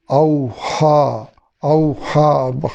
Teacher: خا کو حلق کے درمیان سے ادا کرنا ہے اور کھڑی زبر ہے، اس زبر کو لمبا کرنا ہے